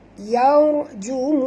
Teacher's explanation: Ra ini mati tuan-puan. Huruf sebelumnya baris atas kena baca tebal. Yaw, bukan yar.